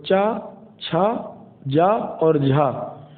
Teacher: तो तालव्य की श्रेणी में चा वर्ग आता है और चा वर्ग के सभी व्यंजन तालु होते हैं। तो चा, छा, जा और झा तालव्य वर्ण होते हैं। इनको तालव्य संघर्षी भी कहा जाता है